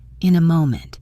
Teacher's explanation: Notice how in a links together, in a moment.